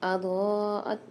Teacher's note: الف کی مقدار کھینچ کے پڑھیں گے فلما اضاءت، یہاں پر ضاد میں دیکھیے بڑا والا مد آ رہا ہے، اس کو ہم 5 الف کی مقدار کھینچ کے پڑھیں گے